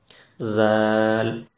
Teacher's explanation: اوپر اور نیچے کے دونوں دانتوں کے درمیان جب زبان کی نوک آئے گی ذرا سی، تو اس وقت یہ حرف ادا ہوتا ہے، زال۔ زیڈ ساؤنڈ اس کا بنتا ہے انگلش کے اعتبار سے، لیکن اس کو باریک پڑھا جاتا ہے، اور باریک پڑھنے کا طریقہ کیا ہے وہ میں آپ کو پہلے ہی بتا چکا ہوں۔